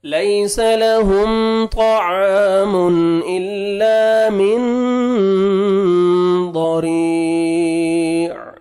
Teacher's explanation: را کو آپ نے باریک کرنا ہے کیونکہ را کے نیچے کسر ہے, اور 1 سیکنڈ کھینچنا بھی ہے.